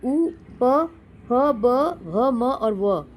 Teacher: उसके उच्चारण में दोनों ओष्ठों का प्रयोग होता है